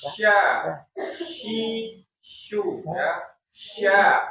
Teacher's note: ada udara yang menyebar ke rongga mulut. Nama sifatnya itu tafasi ya.